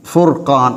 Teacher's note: எனவே ராவுக்கு லம்மத் இருந்தால் வல்லினமாக மொழிவதைப் போல ராவுக்கு முன்னால் லம்மத் இருந்தாலும் ராவுக்கு சுக்குன் பெற்றிருக்கும் போது அதனையும் வல்லினமாக மொழிவோம்